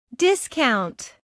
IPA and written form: ˈdɪskaʊnt (Discount)